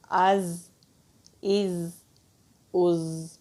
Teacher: جو زبان کی نوک ہے نیچے والے جو دو دانت ہیں ان کے مسوڑوں پر مضبوطی سے لگاتے ہیں تو ہلکی سی بزنگ ساؤنڈ آتی ہے